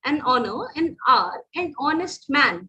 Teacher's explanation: ये तीनों वर्ड्स में वो एच से स्टार्ट तो हो रहे हैं पर वो ह वाला साउंड नहीं है, इट इज ओ वाला साउंड